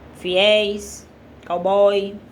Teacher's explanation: Tá dizendo aqui que o som final dessas palavras é aberto